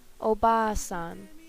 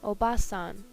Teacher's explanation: the length of the vowel can change one word to another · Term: long vowels